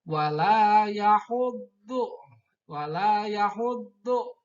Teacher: Do itu makhrajnya yaitu ada pada sisi lidah sebelah kiri mengenai ke gigi geraham yang atas. Kiri ya, gigi kiri geraham atas.